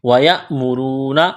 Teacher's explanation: را کو موٹا کرنا ہے، واو مدہ ہے